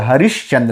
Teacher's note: तो यहाँ पे विसर्ग का परिवर्तन तालव्य सा में हो रहा है।